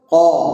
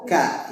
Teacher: langit-langit yang lunak bagian belakang untuk kafnya maju sedikit